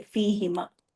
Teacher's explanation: और आप देखें यहाँ भी, या साकिन या जेर आए तो जाहिर है नीचे की तरफ आवाज गई ना, तो ह की पेश भी नीचे चली जाती है, जेर की आवाज ले लेती है